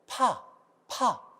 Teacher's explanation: 손바닥을 대고 파 파 하면 손바닥에 바람을 많이 느낄 수가 있습니다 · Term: 거센 소리